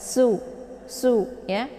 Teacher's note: Kemudian su dibaca pendek, ini su ya, sin. Jadi bacaannya tipis ya. Sifatnya adalah sofir. Jadi anginnya itu lebih jelas.